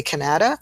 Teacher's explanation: we can hear very clearly that schwa is in the middle of Canada